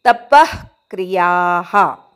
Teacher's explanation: तप च्या विसर्गाचा अर्धा विसर्ग उच्चार